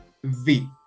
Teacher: same mouth shape as f but using your voice as well put your top teeth on your bottom lip and it is possible to extend this sound for as long as you like · it is possible to extend it like b now for v has the same mouth shape as f but using your voice as well put your top teeth on your bottom lip